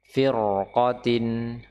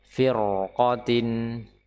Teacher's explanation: kita baca ra dengan tebal. Firqatin, ya, meskipun sebelumnya kasroh, tapi karena qafnya di sini adalah fathah, maka dia ra-nya terbaca tebal.